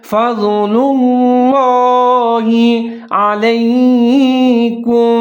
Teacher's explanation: یہاں پر آپ نے ضاد کو پر کر کے اس کو موٹا کر کے پڑھنا ہے